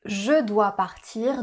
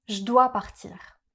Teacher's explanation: Une des contractions les plus courantes c'est celle du pronom « je ». On va rarement prononcer le son « e » du mot « je » mais on va le contracter avec le verbe ou le mot qui le suit. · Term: contractions orales